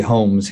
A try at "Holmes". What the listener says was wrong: Holmes funny? Are you making too much effort with the L in Holmes?